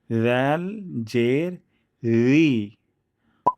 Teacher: জিহ্বার আগা সামনের উপরে ২ দাঁতের আগের সাথে লাগিয়ে তারপর উচ্চারণ করব